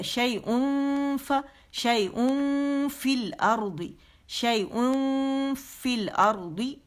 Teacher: شیئن ہے تو یہاں پہ فا تو اخفا ہوگا